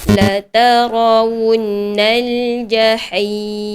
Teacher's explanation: Kalau perhatikan pada nun yang bersabdu tadi, dibaca dengan dengung kadar satu harakat sahaja.